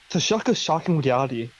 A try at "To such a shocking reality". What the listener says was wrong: Do you say such or shock? It might have been the accent, but it sounded like you said to shock a shocking reality.